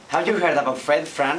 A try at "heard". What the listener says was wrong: Move your tongue backwards. See, when you finish heard, I see your lower lip coming up. So this lip movement is really not appropriate, right? You say, have you heard? And the lip is going up, right? Don't move your lips, right?